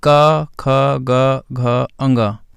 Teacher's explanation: का, ख, ग, घ, अंगा ये जो है कंठ का स्पर्श करते हुए बोले जाते हैं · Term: का वर्ग